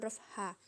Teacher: huruf ini dikeluarkan dari tengah tenggorokan kita